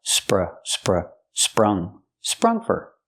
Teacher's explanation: use the short uh like cup and up